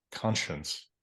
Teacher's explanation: I think that's a syllabic N